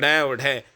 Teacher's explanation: उच्चारण जो है करते समय जीवा जो है ऊपर उठकर झटके के साथ जो है नीचे आती है, तो उनको भाई उत्क्षिप व्यंजन बोलते हैं।